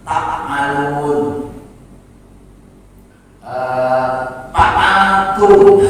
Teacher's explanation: Yang selanjutnya qalbuha ila ma yushbihu harfa P. Jadi bukan yang menghubungkan gigi atas dengan bibir bawah, tapi dengan bibir atas dan bibir bawah P